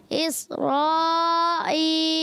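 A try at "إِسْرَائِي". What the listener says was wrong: اب مد پوری کرنی ہے، اسرائی،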